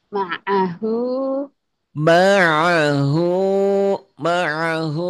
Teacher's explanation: Kalau orang Jawa a-nya enggak jadi nga. Mangahu jangan mangan.